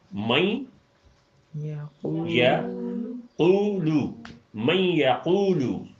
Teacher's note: قاف چھوٹی پیش اور واو ملائیں تو یہ واو معروف کی پوری آواز بن جاتی ہے